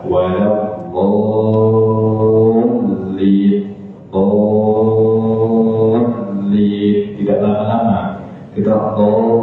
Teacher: Dan yang kedua, berdasarkan sifat suaranya itu bainiyah ketika sukun. Jadi suara lamnya mengalir sedikit, tidak seperti rokhawah dan tidak tertahan seperti siddah.